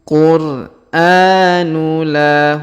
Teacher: Huruf a kita panjangkan 2 harokat karena terdapat alif kecil di atasnya